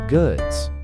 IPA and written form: ɡʊdz (goods)